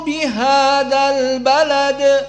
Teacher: dza tanpa Mad bihadal maka Hamzah di sini juga tidak dibaca albalad hamzahnya tidak dibaca langsung kepada lam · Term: hamzatul wasl